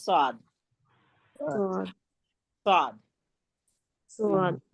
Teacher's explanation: मोटा ठीक है? जबान की नोक को ऊपर नीचे के सामने के चारों दांतों के किनारे से लगाएंगे तो स्वाद अदा होगा